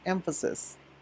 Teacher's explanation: right after the f sound, you have the schwa sound, emphasis